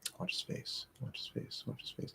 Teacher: there's going to be some sort of little gap probably a tiny tiny little sort of schwa sound